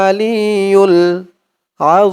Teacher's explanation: তিন আলিফ টান দিয়ে এই মিম কে ধরবে মিমের উপরে পেশটা সাকিন হয়ে যাবে মধ্যে আরজি তিন আলিফ টানুয়াল আলিউল আজিম